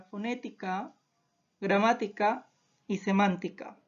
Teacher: si nos damos cuenta la mayor intensidad la tiene en la antepenúltima sílaba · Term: palabras esdrújulas